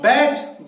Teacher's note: दो लिप्स को हमने मिलाया आपस में, it is a bilateral sound. बैट, दो होंठों को मैंने मिलाया और ये साउंड निकाली है ब की, तो ये कंसोनेंट साउंड है।